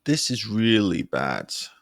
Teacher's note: hear how my voice is gradually lowering the longer the sentence goes on